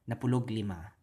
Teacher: Sometimes you'll hear napulo and ug just be contracted together, but 10 and 5.